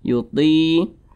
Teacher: Mad tabi'i juga panjangnya itu 2 harokat atau kira-kira 2 ketukan.